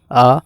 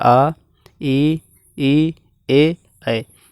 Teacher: आ, मुंह खुल रहा है, वृत्त नहीं बना रहा। आ, ई, ए, ऐ, यहाँ पे वृत्त नहीं बन रहा है, ठीक है। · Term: आवृत्तमुखी स्वर